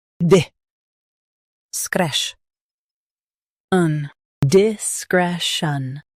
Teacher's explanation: Stress skresh and keep un soft.